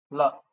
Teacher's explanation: The tongue just touches the tip of the palate.